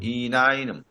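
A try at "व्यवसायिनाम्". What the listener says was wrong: না, আপনি একটা এক্সট্রা নকার আনছেন কেন? ব্যবসায়িনাম।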